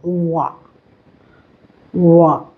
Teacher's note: अब व का उच्चारण दांतों और होठों से करते हैं। व इसे हम दंतोष्ठ उच्चारण स्थान कहते हैं।